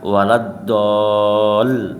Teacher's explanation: Mukhaffaf itu yang ringan, yang musakol itu yang berat ya. Itu musakol ya, karena dia dipanjangkan kemudian ditekan ya, dipanjangkan ditekan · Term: mat lazim